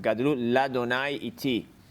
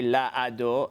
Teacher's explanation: It's swallowed up. So if there's a Kaf or Bet or Vav or Lam before Hashem's name, the patach under the Aleph is not pronounced. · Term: The Aleph is silent